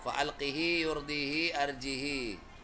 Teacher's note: Semua hak domir ini dibaca panjang dua ketuk kecuali fa'alqihi ini satu